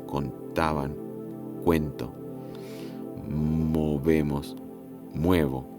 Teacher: con o átona, pero hue tónica